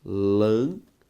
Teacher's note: Ao separar a palavra lâmpada, o nosso resultado é lâmpada. Sílaba tônica, lã. Por isso, antepenúltima e por isso, proparoxítona.